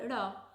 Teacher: ऊपर गई हमारी जीब और नीचे आई फिर बोला ढ़ इसमें ऊपर गई झटके से और फिर नीचे आई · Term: उत्क्षिप्त